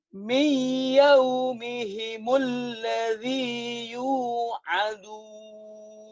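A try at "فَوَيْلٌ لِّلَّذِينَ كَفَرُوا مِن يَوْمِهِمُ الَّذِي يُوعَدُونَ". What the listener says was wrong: Tuh bagus kan? Latih ya.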